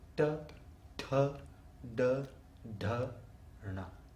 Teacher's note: the tip of the tongue rolls back and hits the front roof of the mouth, the front part of the arch, and you get ta, tha, da, da, na.